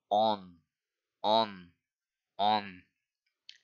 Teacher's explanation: Like in French or Polish, certain vowels can be nasalized. These sounds are made primarily through the nose. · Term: nasal vowels